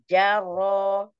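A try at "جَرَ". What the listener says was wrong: Bukan jaro. Kurang ada getar. Jajaroro, coba. Arro, tafkhim. Ada getar, ada tawassut, ada tafkhim ya saat fathah.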